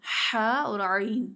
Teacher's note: वस्ते हलक से हा और ऐन अदा होते हैं